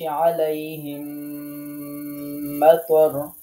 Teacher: শুধু তাসদিদ দিয়ে পড়লে হবে না, এখানে গুণনা সহ পড়তে হবে। অর্থাৎ তাসদিদও দিতে হবে, গুণনাও করতে হবে। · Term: মিম সাকিনের ইদগাম